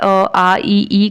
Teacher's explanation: मौखिक स्वर, जिनमें कि हवा केवल मुंह से निकलती है